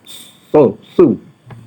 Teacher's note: bunyi su tu berdesir sikit